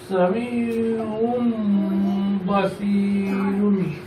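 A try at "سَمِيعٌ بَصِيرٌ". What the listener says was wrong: শুধু গুণনা করলেই হবে না, একটু মানে কি বলে যে একটু মানে গুণাটা একটু লম্বা সময় ধরে করতে হবে, ঠিক আছে? মিম বাদি মানে গুণাটা একটু লম্বা সময় ধরে করতে হবে, একবারে সংক্ষিপ্ত করে ফেললে হবে না।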